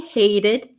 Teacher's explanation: notice the T becomes a flap T, hated. She hated her 9-to-5 job, but loved moonlighting as an actress.